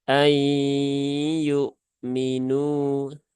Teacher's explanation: Nah, kemudian yaknya juga dikeluarkan ya. Saat menyamarkan nun, nah di saat itu juga kita mengucapkan huruf ya. Jadi separuh di nun, separuh di ya. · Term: idgham